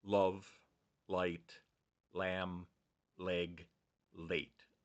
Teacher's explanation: remember all of these are voiced right so love light lamb leg late you can feel the vocal cords vibrating